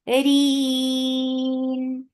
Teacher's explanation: Because of the waqf, you are giving temporary sukoon. This temporary sukoon has turned this 2 count vowel into 4. This is mad alad lis-sukoon.